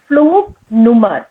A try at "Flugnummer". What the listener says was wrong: Yeah.